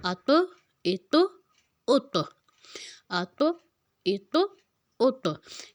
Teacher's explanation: اب طا جو ہے موٹا حروف ہے، اس میں ہم نے لفظ کو ہلانا ہے، لفظ کو ہلا کے پڑھنا ہے۔ جزم میں اس میں لفظ کو ہم نے ہلا کے پڑھنا ہے۔